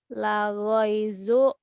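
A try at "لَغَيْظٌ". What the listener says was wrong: laghaizun, zon, ada tanwin, laghaizun,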